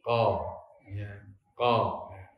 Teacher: Walaupun di buku-buku tajwid penjelasannya hanya naiknya lidah, tapi standarnya atau al-mu'tabar dalam yang dijadikan ukuran naiknya lidah adalah pangkalnya. Jadi ketika orang mengucapkan qaf, agar supaya bersifat isti'la, maka pangkal lidahnya dinaikkan. Dengan menaikkan pangkal lidah itu suara menjadi o, jadi ko, ya, ko.